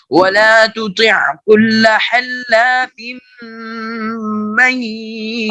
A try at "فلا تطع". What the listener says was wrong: آپ کا یہ تطیع کا طا صاف نہیں ہے، ولا تطیع، اوپر چلے جائیں، فلا تطیع یہاں سے پڑھیے، صاف پڑھیے، تا اور طا، سنیے، نہیں بیٹا، نہیں، تا اور طا میں فرق کریں نا، فلا تطیع